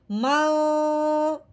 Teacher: ہم نے نون ساکن پہ غنہ کیا ہے۔ اگر ہم نون ساکن کا غنہ اخفا کا نہیں کرتے، اظہار کا کرتے ہیں، تو پھر یہ پڑھا جائے گا من۔ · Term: اخفا کا غنہ